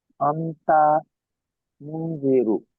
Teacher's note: নুন সাকিনের পরে হরফে ইকফার 15টি অক্ষরের মধ্যে জাল এসছে, তাই নুন সাকিনের আওয়াজকে নাকে তুলে এক আলিফ পরিমাণে গুণনাও করে করতে হবে। জালের নিচে জের এসছে, যেটি হারাকাত, হারাকাত তাড়াতাড়ি করতে হয়, টান দেওয়া নিষেধ।